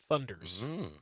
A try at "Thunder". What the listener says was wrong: I think that S is silent. Oh, that's why we don't say Thunders.